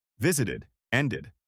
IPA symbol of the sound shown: ɪd